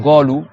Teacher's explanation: en arabe littéraire, ça existe de prononcer le qaf go